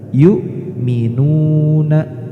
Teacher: tidak boleh dibaca ain tapi harus jelas hamzah. Jadi dibaca izhar.